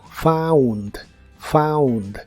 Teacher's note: La combinación de las letras O, U en inglés muchas veces se pronuncia como AU, como en este caso, found, found.